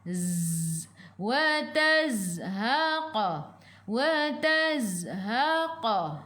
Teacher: Zai sifat hurufnya safir kena bunyikan lebah.